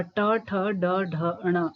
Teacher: उत्क्षिप्त, ये मैंने आपको पहले भी बताया था कि उच्चारण में जीवा का मूर्धा से टकराकर झटके के साथ वापस आना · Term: उत्क्षिप्त व्यंजन